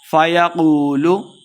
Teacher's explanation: واو مد ہے دو حرکات لمبا کریں گے اور قاف کو موٹا کر کے پڑھنا ہے